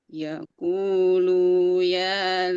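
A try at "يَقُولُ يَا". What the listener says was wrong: Lu-nya pendek. Yaqulu ya.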